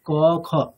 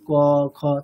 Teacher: ঠিক আছে, একেবারে ভিতরের দিক থেকে উচ্চারিত হয়, মানে আমাদের কি বলবো, মানে গলার উপরের দিকে, গলার শেষ মুখের শুরু ওই অংশে মোটামুটি ক বর্গের উচ্চারণটা হয়।